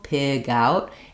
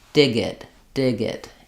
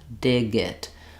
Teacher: if you link to a vowel, then your G sound is going to go to the next word